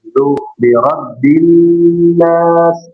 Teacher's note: ujung lidahnya enggak di dalam, tapi di luar. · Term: huruf zal